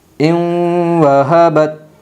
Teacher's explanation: نون ساکن کے بعد یمن کے 4 حرفوں میں سے واو آئی ہے، اس لیے نون ساکن کو غنہ کے ساتھ ملا کر پڑھے گی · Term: ادغام مع الغنہ